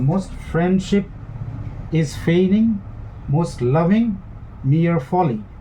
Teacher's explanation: So most friendship is feigning, most loving mere folly. So unstressed, stress, unstressed, unstressed, stress, unstressed. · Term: amphibrachic